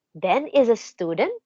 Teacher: Ben is a student with matching rising intonation sa dulo.